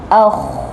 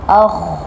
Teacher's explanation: Sepatutnya huruf kha perlu diangkat pangkal lidah dan keluarkan bunyi dari hujung ke rongkong.